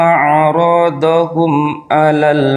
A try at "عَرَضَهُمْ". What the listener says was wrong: عرضهم tidak panjang.